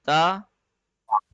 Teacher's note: ता बा और ता, ये दोनों नरम लेटर्स हैं, लाइट लेटर्स हैं, इनमें ताकत नहीं लगेगी। और ता जो है उसमें जुबान की नोक, जुबान की टिप हिल के ऊपर हल्का सा टच करेगी।